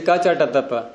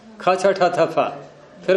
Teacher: एक अल्प प्राण एक महाप्राण जो हल्के पन से बोले जाते हैं जैसे क च ट त प ये हल्का है अल्प प्राण